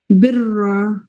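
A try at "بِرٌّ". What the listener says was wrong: बिरून है सिस्टर, इसमें दो पेश है ना, ठीक से नजर नहीं आ रही है। इसमें आप बता दीजिए बारीक एंड पुर।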